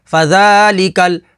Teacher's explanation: لام کے اوپر تشدید ہے تو تشدید والے حرف کو 2 دفعہ پڑھیں گے۔